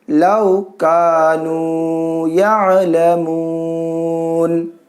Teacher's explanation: یہاں پر وقف کریں گے تو نون کو ساکن کریں گے